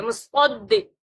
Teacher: اس سے بھی صاد پڑھیں گے، صا کی آواز آنی چاہیے، سوا سین سا نہیں آنی چاہیے